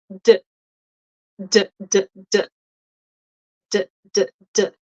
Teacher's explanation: Notice that there's no tongue between my teeth and there is vibration here.